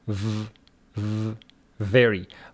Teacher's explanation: is a labiodental sound for which your teeth and your lips touch each other